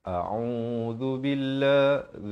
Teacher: zal di hujung lidah, lafz jalalah dibaca nipis 2 harakat.